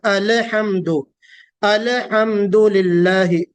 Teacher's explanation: لام پر قلقلہ ہوتا ہے نا، آواز میں جنبش پیدا ہوتی